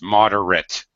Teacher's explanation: when it is an adjective as in this case it's moderate the at ending is very much under pronounced it's an unstressed syllable